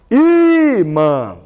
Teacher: O tio só me indica que o som sai pelo nariz, que o som é nasalizado. · 2 sílabas. A penúltima é a mais forte. E o acento está aqui, ó. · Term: paroxítona